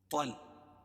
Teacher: طا کو موٹا پڑھیں گے طا کو لام میں ملائیں گے